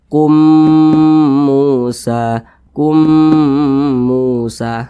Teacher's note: di depannya maka nama hukumnya adalah idgham mimi bacanya itu diengungkan didengungkan itu suaranya itu kita tahan kita panjangkan kira-kira dua ketukan atau dua harakat